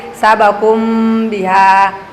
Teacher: menyamarkan suara mim mati dengan disertai dengung apabila ada mim sukun bertemu dengan huruf ba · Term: ikhfa syafawi